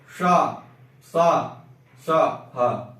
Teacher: वायु रगड़ कर घर्षण करते हुए बाहर आ रही है, सीधा वायु बाहर नहीं आ रही है